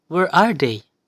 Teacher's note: they is the last term and it is stressed so it requires high pitch and as we approach the end part we need to lower our voice